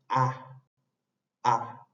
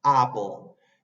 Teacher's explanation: esto es un nuevo sonido vocal es a a bien abierto